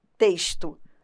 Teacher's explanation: claro que isso depende da localidade em que a pessoa more porque eu que sou carioca falo com som de ch